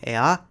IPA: ɛaː